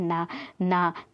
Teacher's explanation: ना बोलते हैं ना तो दात और नासिक से बोलते हैं दंत और नासिक से बोलते हैं